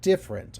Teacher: This first syllable is stressed and the second syllable is unstressed. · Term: syllable stress